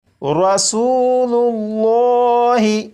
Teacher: پر لام اور لام سے پہلے لام کے اوپر پیش ہے، لفظ اللہ کے لام سے پہلے حرف کے اوپر پیش ہے، اس لیے یہاں پر بھی لفظ اللہ کے لام کو پر یعنی موٹا پڑھیں گے ، اور یہ پڑھا جائے گا رسول اللہ۔ اور اگر لفظ